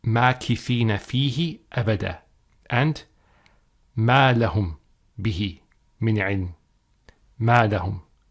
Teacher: if we were to recite these ayat from the beginning of them, we would not pronounce the meme with a shaddah. So the ayat would be read, مَاكِثِينَ فِيهِ أَبَدًا, and مَا لَهُمْ بِهِ مِنْ عِلْمٍ, مَا لَهُمْ.